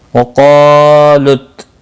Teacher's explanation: قاف مستعلیہ ہے اس لیے پر پڑھا جائے گا، اس کے ساتھ میں الف بھی ہے یہ بھی پر پڑھا جائے گا۔